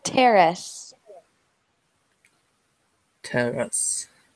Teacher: we want to put the emphasis on the first syllable, terrace.